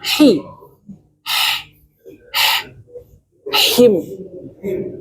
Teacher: Dibunyikan dulu udaranya baru him.